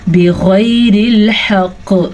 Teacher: غین ہمیشہ ہی پر پڑھا جاتا ہے اور ساتھ ہی آگے ہمارے پاس یالین ہے، اسے ہم کھینچ کے نہیں پڑھ سکتے اور نہ ہی لمبا کر سکتے ہیں. را کو باریک پڑھیں گے، را کے نیچے زیر ہے. اور وقف کی صورت میں ہا کو واضح کر کے پڑھیں، ہا کے مخرج سے ہی، اور قاف پہ جھٹکے کی وجہ سے کلکلا ہوگا. · غین کو پر پڑھنا ہے. غین ہمیشہ ہی پر پڑھا جاتا ہے اور ساتھ ہی آگے ہمارے پاس یالین ہے، اسے ہم کھینچ کے نہیں پڑھ سکتے اور نہ ہی لمبا کر سکتے ہیں.